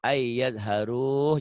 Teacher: Jadi panjang. Karena mad tabi'i ketemu satu huruf hidup di tengah.